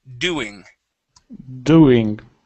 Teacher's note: let's put that stress on the ooh sound.